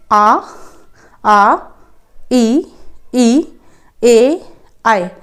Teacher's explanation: आपके ओंठों की आकृति बिल्कुल गोल हो ही नहीं रही है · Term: अव्रतमुखी स्वर